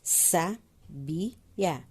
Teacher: A sílaba tônica é no bi.